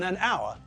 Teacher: we don't pronounce the first letter and so the word sounds as though it begins with a vowel it sounds as though it begins with the letter O okay